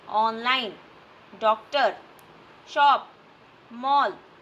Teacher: ये ध्वनि अंग्रेजी से ली गई है। यह आ व ओ के बीच के स्वर ध्वनि है।